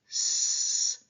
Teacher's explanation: So when we have an unvoiced fricative like s there is a sound there. We do hear a sound but that sound isn't coming from phonation. That sound is coming from um the noise coming through the passageway coming through that constricted channel that we've formed in our mouths.